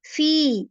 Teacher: وَإِن كُنتُم تم فی, یہ جو فی ہے نا اس میں اکثر غلطی ہوتی ہے کہ ہم فی کو, یہ دیکھ یا مدہ ہے نا, اس میں یا مدہ ہے تو یا کی وجہ سے فا سے 2 حرکہ جتنا لمبا کھینچے گا. 2 حرکہ جتنا کھینچنے کا کیا مطلب ہے, 2 انگلیاں جتنا.